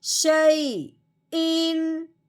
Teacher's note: اب ہم نے تنوین پہ غنہ نہیں کرنا، بغیر غنے کے اظہار کے ساتھ پڑھنا ہے۔